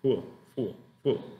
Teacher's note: la articulación de la F es labiodental. Entonces ese labio inferior te deje como así, como entre los dientes, ¿verdad?